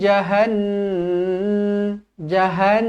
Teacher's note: Nun yang bertanda sabdu wajibul gunah di baca dengung dua harakat